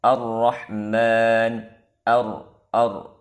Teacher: daripada apa dia hati-hati daripada menebalkan Hamzah wasal pada kalimah arrahmanirrahim jangan sampai Hamzah wasal pada ayat yang ketiga ini ketika dimulainya terbaca tebal